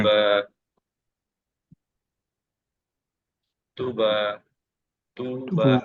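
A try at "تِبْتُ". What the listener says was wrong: তুবা, আরেকবার বা আবারও স্মাইলি ফেস হয় না, নিচের ঠোঁটটা আরেকটু স্মাইলি হবে, হ্যাঁ।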